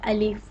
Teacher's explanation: अलिफ को बिल्कुल मुंह के खाली हिस्सा से अदा होता है। अलिफ बिल्कुल सादा अलिफ।